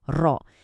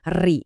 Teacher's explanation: kalau harokatnya fathah atau dhammah, bacanya tebel, ro. Itu namanya tafkhim, tapi kalau sebelumnya kasroh, bacanya tipis, ri. Itu tarkik.